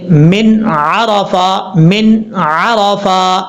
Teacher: یعنی حرف کو ظاہر کر کے پڑھنا۔ یہاں نون ساکن کو ظاہر کر کے پڑھیں گے، چھپا کے نہیں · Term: اظہار حلقی